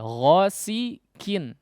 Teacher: qaf di sini kurang kuat sehingga cenderung terdengar huruf kaf